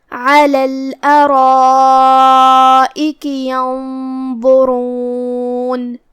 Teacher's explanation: را کا بھی حکم ہے تفخیم کیونکہ اس پہ پیش ہے تو ہمیں اسے بھاری آواز میں پڑھنا ہے